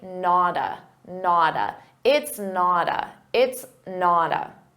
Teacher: Not a, we can combine these together, but notice we have a T between 2 vowels. So a native speaker is going to pronounce that as a soft D and say nada.